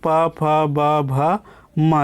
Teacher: दोनों होंठ से जो है वो टच करके हो रहा है, तो ये जो है स्पर्श व्यंजन कहलाते हैं।